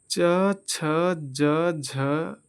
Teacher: च, छ, ज, झ, को स्पर्श संघर्षी व्यंजन कहते हैं